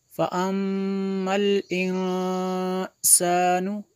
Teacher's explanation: میم میں شدد ہے غنہ ہوگا